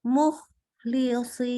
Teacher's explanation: Jadi bunyi sukunnya itu nggak boleh putus. Suara udara keluar terus. Mukhlisin. Gitu ya, keluar terus udaranya. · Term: rokhah